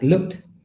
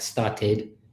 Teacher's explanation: We have a t sound, like looked, and we have a d sound, like played, and we have an id sound, like started.